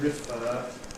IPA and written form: rɪˈfɜː (refer)